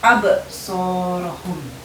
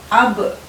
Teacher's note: Kemudian contoh pada huruf ba yaitu ketika kita mengucapkan absorohum ya. Ab ada pantulan yang kuat ketika kita mengucapkan huruf ba